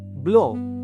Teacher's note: Semasa bunyi ini dihasilkan, pita suara bergetar. Bahagian belakang lidah berada pada kedudukan separuh rendah. Lelangit lembut dinaikkan untuk menutup rongga hidung. · Bibir berada dalam keadaan hampir bundar. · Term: vokal belakang separuh rendah, vokal belakang separuh luas